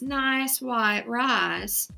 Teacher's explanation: the long I sound shift to the short a in some southern accents and dialects